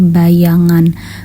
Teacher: bunyi mediopalatal yaitu bunyi yang terjadi akibat Tengah lidah bersentuhan dengan langit keras